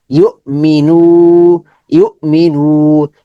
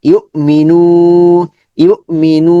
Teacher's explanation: শুধু নুটাই লম্বা হবে ইমি দ্রুত হবে